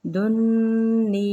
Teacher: نون مشدد پہ غنہ کریں گے